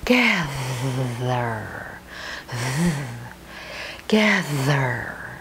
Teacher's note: Once again, you have the TH. The voiced one, just like rather, gather. Rather gather.